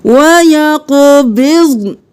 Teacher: ضاد کو بھی ساکن پڑھنا ہے موٹا کرتے ہوئے، نون کو بھی ساکن پڑھنا ہے۔